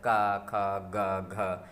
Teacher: जब हम इनका उच्चारण करते हैं तो हमारे इनका उच्चारण कंठ से होता है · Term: कंठ वर्ण